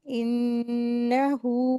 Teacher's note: नून मुशदत है गुना करेंगे